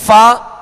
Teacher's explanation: دونوں ہونٹوں کو ملا دیں گے تو فا پھا بن جائے گا، جو کہ غلط طریقہ ہے اور حرف صحیح ادا نہیں ہوگا.